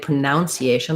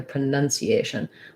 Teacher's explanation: syllable stress is on the A syllable